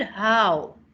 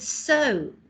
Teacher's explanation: the word how and the word so both have the letter O in them but it's not assonance because this sound is different one sounds like au and the other one sounds like oh